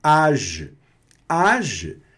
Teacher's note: a própria G aqui está tendo um sonzinho de E no final, não tá? Então fica um som bem discreto, quase que mudo.